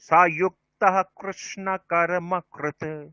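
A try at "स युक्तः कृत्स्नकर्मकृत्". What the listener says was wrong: যুক্তঃ এখানে থকার বলতে হবে একটা। সযুক্তঃ কৃৎস্ন কর্মণ্যকর্ময়ঃ পশ্যেৎ অকর্মণি চ কর্ময়ঃ সবুদ্ধিমান মনুষ্যেষু সযুক্তঃ কৃৎস্ন কর্মকৃৎ।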